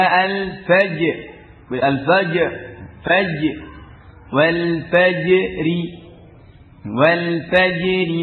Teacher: dengan di ee sukun yang memiliki sifat yang kuat qalqalahnya ya Qalqalah memiliki karakter kuat meskipun kuat tapi asalnya adalah huruf mustafilah tetap di baca tarqik